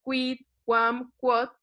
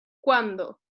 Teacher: que tiene este sonido de oclusivo, una U o W, digamos, y una vocal más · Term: sonido oclusivo